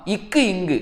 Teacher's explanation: நாவின் முதற் பகுதி, அன்னத்தின் அடிப்பகுதி.